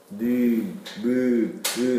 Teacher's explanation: 느 므 으 하면 코가 울립니다 · 콧소리, 비음, 코로 내보내면서 나는 소리, 요게 콧소리죠. 느, 무, 으 하면 코가 울립니다.